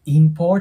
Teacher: ていう感じで、あを発音される方いるんですけど、これ数字の4と同じ発音になります。なので、for▁ですね。before▁こんな感じになります。で、F▁の発音というのは下唇の粘膜あたりを上の歯で押さえて▁for▁と発音するので▁before▁と発音してもらえたらと思います。で、その後の▁going▁to▁bed▁なんですけど、こちらに関してもこの▁going▁の▁G▁また破裂音で音がなくなります。going▁to▁で、そのね、最後の▁bed▁ですね。で、この▁bed▁の▁D▁で終わって、その後▁is▁から始まってるんで、子音足す母音っていうのは音がリンキングして▁bed▁is▁になりますね。bed▁is▁で、最後の▁important▁これもね、注意が必要です。これね、 アメリカ英語ではこのね、tan▁の部分ですね。ここの▁t▁の音がなくなります。 なので、important